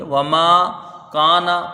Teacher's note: واو کو جلدی پڑھا جائے گا، میم میں الف مدہ ہے، ایک الف کی مقدار، اس کو کھینچ کے پڑھیں گے۔ وما کانا، کاف میں الف مدہ ہے، اس کو کھینچ کے پڑھا جائے گا، نون کو جلدی پڑھیں گے۔